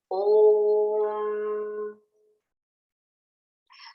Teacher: sixth is the nose you know when i say om [Music] where is the humming sound coming from the nose so that is called nasal